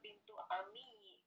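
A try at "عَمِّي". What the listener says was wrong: Ibu perhatikan tanda tasdid pada kata ammi itu bukan milik ya tetapi milik mim jadi bacanya begitu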